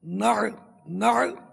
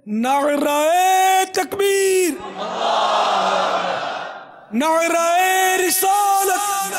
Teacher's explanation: نعرے رسالت، نعوذ باللہ، رسالت کی آگ، یہ نار نہیں ہے، نار مانے تو آگ ہوتا ہے، عین ہے بیچ میں، عین، نعر، نعر، پھر حمزہ کے نیچے زیر آئے گا، نعرے نہیں، نعرہ تکبیر، نعرہ رسالت، تو اس طرح لگائیں گے نعرہ تکبیر، نعرہ رسالت۔